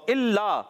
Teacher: اچھا، دونوں کو 2 ڈھائی الف یعنی 4 یا 5 حرکات کھینچ کر پڑھتے ہیں، ٹھیک ہے نا، آپ نے اس چیز کا خیال رکھنا ہے۔ تو الا، حمزہ خوب واضح کریں گے، لا مشدد، ذرا رک کر ادا کریں